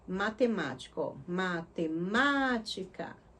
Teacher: O ma é o mais forte, né? E ela é a antepenúltima sílaba. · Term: proparoxítona